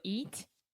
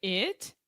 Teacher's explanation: So the first sound is a very extreme smile, very front sound. The second sound, your lips are close together, they're more relaxed, they're not moving.